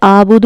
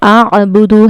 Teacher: आइन का मखरज हलक के दरमियानी हिस्से से अदा होता है।